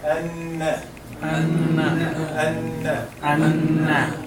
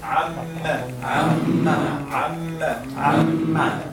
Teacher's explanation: When the gunna is applied, it means it should be 2 beats.